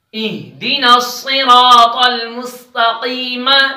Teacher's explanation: ادھر صاد کو بھی موٹا کریں گے را کو بھی موٹا کریں گے صاد حروف موٹے حروف میں سے ہے را پر زبر ہے